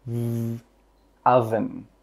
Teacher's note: With that V sound, your throat should vibrate.